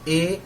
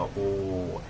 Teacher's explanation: ए में मुंह गोल नहीं बनेगा, लेकिन जैसे है ओ में ओठ गोल बनेगा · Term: अर्ध संवृत